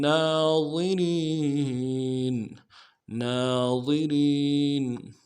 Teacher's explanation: اگلا جو نون ہے اس کے اوپر کھڑا زبر ہے، ایک اطمینان میں کھینچیں گے، را کو موٹا کریں گے، را کو یا کے ساتھ ملانا ہے، را کو باریک کریں گے، یا مدہ ایک اطمینان میں کھینچیں گے، نون کو نون سے ادا کریں گے.